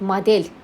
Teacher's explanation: Model vuruğu E-yə düşür. Vurğu E-yə düşür deyə o A-ya keçir.